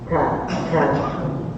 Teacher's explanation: saat pengucapan dan saat dia sukun sama-sama keluar nafas.